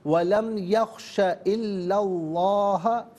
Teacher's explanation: ملا کر پڑھنے کی صورت میں اللہ میں لام پر زبر سے لفظ اللہ کی لام کے ساتھ ملائیں گے، درمیان سے حمزہ یعنی الف کو حذف کیا جائے گا۔ لفظ اللہ کی لام سے پہلے والے حرف لام پر زبر ہے تو لفظ اللہ کی لام کو پر کر کے پڑھیں گے